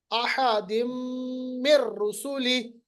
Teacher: یہ جو نون ساکن کے بعد را آ رہا ہے، نون کی آواز را کے ساتھ ملائیں گے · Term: ادغام